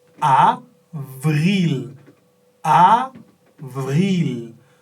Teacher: La lèvre inférieure touche les dents.